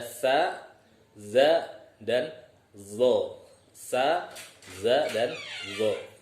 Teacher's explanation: ujung lidahnya dia, nah, bersentuhan dengan ujung gigi seri yang atas. Ingat, hanya menempel, bukan digigit.